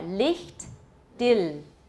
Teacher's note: German does not have a dark L at all.